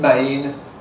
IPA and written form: meɪn (main)